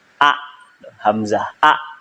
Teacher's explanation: hamzah mah keluarnya ntar dari makhraj al-halq, dari tenggorokan kalau hamzah mah.